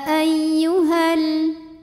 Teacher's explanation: ayyuha namun ini dibaca panjang dua harakatnya hanya saat berhenti saja kalau wasal atau terus madnya gugur h-nya pendek hal langsung tempel ke lam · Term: takhalus bilhfi